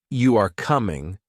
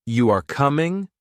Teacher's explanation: But if you say, You are coming, with a rising tone, it is a question.